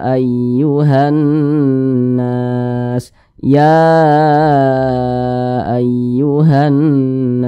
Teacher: namanya madis munfasil panjangnya itu 4 hingga 5 harakat atau 4 hingga 5 ketukan